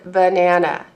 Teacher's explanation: notice that it doesn't make a true short A sound or long A sound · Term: schwa